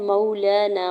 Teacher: मौलाना, वाव साकिन पर मीम के ऊपर ज़बर, वावलीन हो रहा है। लाम के ऊपर खड़ी ज़बर है, दो रकत खींच के अदा करेंगे